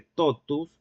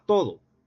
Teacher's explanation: Sonorización del oclusivo alveolar sordo por efecto de lenición céltica